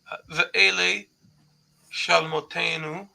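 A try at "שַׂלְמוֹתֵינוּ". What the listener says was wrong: Not sha, but salmotenu. So salmotenu, we talked about that before. Remember, salma is like simla.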